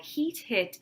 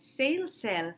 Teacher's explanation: So the differences between heat, hit, and sail, sell is that heat and sail are tense vowels and hit and sell are lax vowels. Very often this distinction between tense and lax can be easily understood by students if you think about a long vowel versus a short vowel.